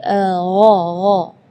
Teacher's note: kalau huruf ghain itu dari bagian tenggorokan ya.